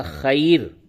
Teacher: تو یہ را موقوفہ ہے، یعنی اس پہ ہم یہاں پہ وقف کریں گے تو یہ موقوفہ بن جائے گا. تو پھر اس سے قبل یا ساکن ہے تو اس کو آپ باریک پڑھیں گے وقف کی حالت میں